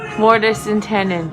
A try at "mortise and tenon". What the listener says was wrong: I don't think it's a D. It's not tendon. It's tenon.